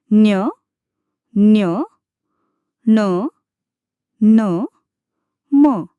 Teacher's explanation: अनुनासिक व्यंजन ज्यांच्या उच्चारात हवा नाकातून बाहेर पडते.